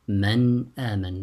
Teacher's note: the noon here is recited with idhar